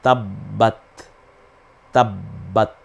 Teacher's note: ত বলতে হয় স্বাভাবিকভাবে জিহ্বার আগা সামনের দাঁতের আগার সাথে না মিলে এবং গোড়ার সাথে মিলে